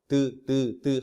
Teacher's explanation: 혓바닥이 혀끝이 앞니를 치고 빠지잖아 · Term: 디귿의 위치